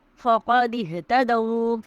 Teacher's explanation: فقد اهتدوا میں قاف کی آواز کو ہم حلق سے ادا کریں گے